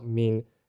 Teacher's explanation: the next word mean oh it's a downward tone